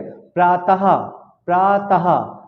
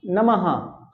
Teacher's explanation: देखिए लास्ट में मेरे हा निकल रहा है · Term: विसर्ग